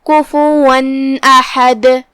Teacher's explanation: حمزہ حروف الابہار میں سے ہے، ابہار کا معنی ہے ظاہر کرنا، تو ہم یہ تنوین کو ظاہر کریں گے اور اسے نون ساکن ادا کریں گے اور بغیر کوئی غنہ کے یہ حکم کو ادا کریں گے۔